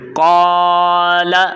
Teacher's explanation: یہاں پر قاعدہ ہے الف مدہ کا۔ تو پہلے ہم نے قاف کو الف کی مقدار تک کھینچنا ہے، لام کو حرکات کی مقدار تک پڑھنا ہے